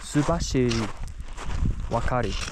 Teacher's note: the R sounds, ra, la, they sound like L's, mixed between an R and an L.